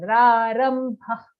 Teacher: For the visarga, we have to say a kha-like sound, not kha exactly, a lighter version.